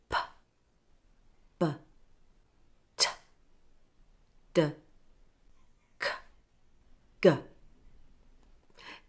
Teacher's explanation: Notice how the sounds take your tongue from the front of your mouth to the back.